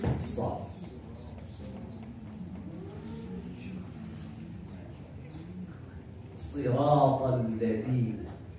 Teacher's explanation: Tetapi ada tersendiri sifat yang dimiliki huruf shad menurut para ahli tajwid, ahli qiraah, disebut dengan sifat shafir. Shafir diistilahkan shafir oleh para ahli seperti siul burung di hutan, di pohon-pohon besar.